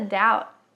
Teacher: Doubt o b não é pronunciado e o t também a gente só encosta ele no no topo da do céu da boca ele fica aqui ó é mesmo lugar do n no no